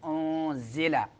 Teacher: نون کو چھپائیں گے ناک میں، انزل۔ زا سیٹی والے حروف میں سے، تین حروف سیٹی والے، زا سین صاد، تینوں کو ادا کرتے ہوئے سیٹی نکلے گی اور شدت کے ساتھ ادا ہوتے ہیں۔ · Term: اخفاء